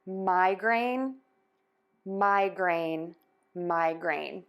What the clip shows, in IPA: ˈmaɪˌgreɪn